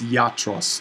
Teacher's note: iota this is not a diphthong it's not i it's yatros i before a vowel in greek can often kind of do a y sound